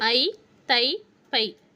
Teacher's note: ஐகாரம் தனியாக வரும்பொழுது தன்னுடைய இரண்டு மாத்திரை அளவிலிருந்து குறையாமல் ஒலிக்கும்